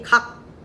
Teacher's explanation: 숨이 안 쉬어지고 혀의 뿌리가 어디에 닿아 있니? 각. 그쵸. 혀가 여린 입천장에 탁 붙어 있단 말이에요. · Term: 여린 입천장에서 나는 소리